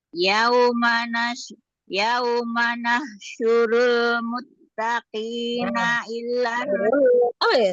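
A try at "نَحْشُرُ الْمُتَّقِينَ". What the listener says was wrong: Tambah lam.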